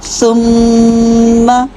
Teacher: میم مشدد غنہ پورا کیجیے، زبر لمبی نہیں ہونی چاہیے، زبر کو ایک ہی حرکت پڑھنا ہے، لمبا نہیں کرنا۔